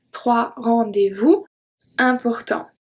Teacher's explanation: So, here we have the 2 last letters that are silent, muettes. The T and the S.